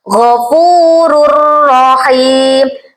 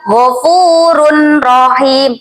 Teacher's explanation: ada dummah tanwin bertemu dengan huruf ro langsung masuk ke huruf rnya dengan panjang dua harakat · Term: idgham Bila ghunah